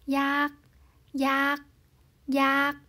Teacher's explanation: phụ âm đầu là phụ âm thấp, vì vậy chúng ta sẽ đọc nó với siang tho